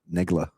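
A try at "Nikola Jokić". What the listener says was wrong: It's a K. Nikola.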